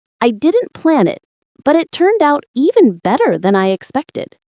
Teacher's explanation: notice how the stress falls on plan, turned out, and expected